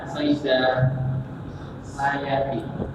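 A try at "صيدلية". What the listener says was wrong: Gak ada Pak layati itu. Kalau liyah. Saidaliyah.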